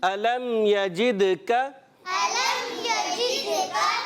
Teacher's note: میم ساکن کے بعد یا آنے کی وجہ سے اب یہاں پر غنہ نہیں ہوگا